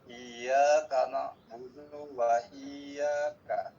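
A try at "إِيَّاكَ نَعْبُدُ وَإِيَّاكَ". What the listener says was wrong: Oke, hati-hati dunya itu tidak boleh panjang dua ketukan, tapi langsung menyambar ke wa. Iyyaka na'budu wa iyyaka. Oke, nah supaya dunya tidak kepanjangan, coba perhatikan saya Pak. Nah, supaya ternyata dari du ke ka itu bisa cepat kan gitu kan ya. Na'budu wa iya.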